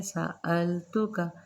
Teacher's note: سألتک، سین زبر سا، حمزہ کو لام کے ساتھ ملائیں گے، سألتک، جھٹکا نہیں دینا، زبر سے نہیں، التک نہیں کرنا، نارمل، سألتک، کاف باریک ہے، نرمی سے ادا کیا جائے گا۔